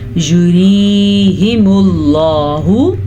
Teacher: یریہم اللہ، اس را کو پر پڑھنے کی غلطی آپ نے نہیں کرنی کیونکہ را کے نیچے ہے زیر. جب را کے نیچے زیر ہو تو را باریک ہی پڑھی جاتی ہے